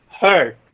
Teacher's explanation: it's the central unrounded vowel between half open and half closed position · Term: non-final schwa